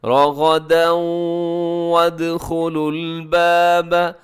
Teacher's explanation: شئتم رغدا وادخلوا الباب، رغدا، را موٹا ہے، غین بھی موٹا ہے، آگے دال کے اوپر تنوین ہے، تنوین کے بعد جب واو ہے جو یرملون کا ہے تو یہاں پر ادغام ہوگا، کیسے؟ غنے کے ساتھ ادغام ہوگا۔